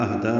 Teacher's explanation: اہدا میں حمزہ کو اقصی حلق سے، ہا کو بھی اقصی حلق سے ادا کرنا ہے. حمزہ کو بالجہر ادا کرنا ہے، ہا پہ ہمس ہوگا.